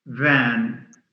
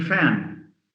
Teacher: in a word like van, if we mispronounce the v as f, we end up having fan.